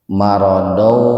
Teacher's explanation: Marodau idgham biguna, fathatain ketemu dengan wawu, jadi diidghamkan, dimasukkan ke wawu dengan mendengung. Dau, jangan marodau, marodau.